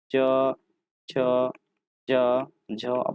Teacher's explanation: तो च वर्ग का उच्चारण हम लोग कौन सा करते हैं? तो हम लोग तालु से करते हैं।